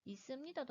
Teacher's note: 두 번째 음절 받침의 비읍은 안 울림소리이지만 세 번째 음절 첫 소리인 니은이 울림소리이기 때문에 이 비읍도 울림소리인 미음으로 변화하게 되는 비음화가 일어나게 됩니다.